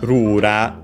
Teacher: Of course, uh the L sound isn't in Japanese, so it becomes also R accent luckily on the first syllable as expected